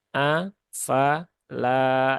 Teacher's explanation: Ya, lamnya 2 harokat. Ada alif setelah fathah.